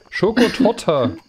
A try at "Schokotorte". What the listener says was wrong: Torte mit R. Schokotorte, nicht Du sagst Torte. Das klingt wie Kloake, echt.